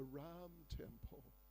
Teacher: in Sanskrit end with an a which is pronounced but in Hindi in many cases they drop the a